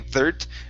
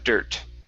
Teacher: pulling the tongue back on that d so you're not saying third but dirt